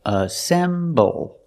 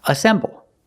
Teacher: Assemble. It's 3 syllables. Assemble. The stress is on the second syllable. Assemble. And the second word is assembly.